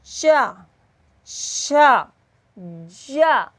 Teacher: अपना ये जीभ का मध्य भाग काम करेगा, अग्रभाग नीचे हो जाएगा, पश्च भाग नीचे रहेगा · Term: स्पर्श संघर्षी